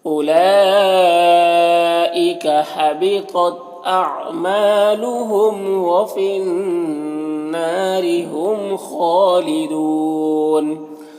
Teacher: میم میں یہاں پر اظہار شفوی ہو رہا ہے۔ خا حروف مستعلیہ میں سے پر پڑھیں گے، کھڑا زبر ایک الف کے برابر کھینچیں گے۔ یہاں پر وقف کی صورت میں مد عارض وقفی ہوگا تو اس طرح سے پڑھیں گے۔